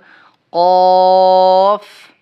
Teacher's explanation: এই কফে কিন্তু টান দিতে হবে তিন আলিফ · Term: তিন আলিফ টান